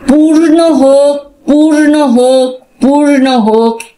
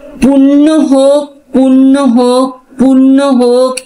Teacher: শেষের পূর্ণটায় আমি উচ্চারণ করলাম একটু র দিয়ে, আর আগের পূর্ণটায় কোনো র নেই।